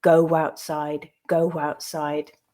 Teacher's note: But we can also think about the phrase go outside, where there is no written W, but where we still hear that W sound coming through to link between the O and the ow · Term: intrusive /w/